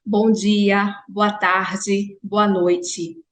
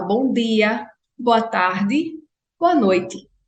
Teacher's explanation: minha não palatalização do t e do d